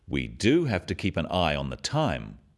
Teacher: Notice the emphasis on the word do